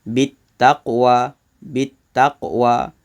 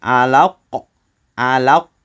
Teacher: Sughra lebih ringan, detakan dia lebih nipis. Kubra detakannya lebih kuat. Alaq. Bukan bunyi tu kuat, tapi lebih tebal. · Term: qalqalah sughra